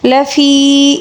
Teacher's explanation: لفی، فی یہاں پر یا مدہ ہے، یا مدہ کو ایک الف کے برابر کھینچ کر پڑھیں گے